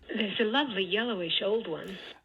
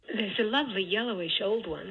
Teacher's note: You can hear those peaks, or you can see it as well. Those peaks go down in F0 as you proceed through the phrase. And in order to denote that in your transcriptions, you put an exclamation mark in front of the H star part of that bitonal pitch accent. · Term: downstepping